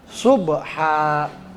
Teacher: Subha, sod, bukan sin ya, bukan sub, tapi subha. Ba-nya sukun, berarti dia dibaca qalqalah karena ba itu salah satu huruf qalqalah.